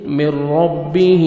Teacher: من ربه ہاں کھڑا زیر ہے 1 سیکنڈ کھینچیں گے